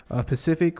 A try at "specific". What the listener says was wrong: You said specific, but you kind of like lagged on the S.